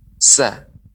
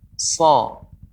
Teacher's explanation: Ya mirip dengan sin, akan tapi bedanya huruf sin lidah kita datar. Sa. Kalau so, lidah kita naik. Ya, terangkat. So. So, ya, naiknya suara juga.